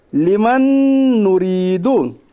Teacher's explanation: जिनको इजरा समझ नहीं आता उनके लिए मैं कह रहा हूँ, जो सीधा साधा लफ्ज़ों में समझना चाहते हैं, जब दो नून एक साथ आए, पहले पे जज़म दूसरे पे तशदीद, वहाँ सीधा जज़म वाले नून को खा डालना चाहिए, यानी जज़म वाले के नून को पढ़ना नहीं है, सीधा तशदीद वाला नून पढ़ा जाएगा